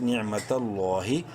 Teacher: لفظ اللہ سے پہلے زبر ہے، لام کو بولڈ کریں گے ایک الف کے برابر لمبا بھی کریں گے کھڑی زبر کی وجہ سے